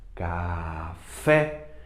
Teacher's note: a mais forte é o fé portanto ela é oxítona terminada em é si pó si pó a mais forte é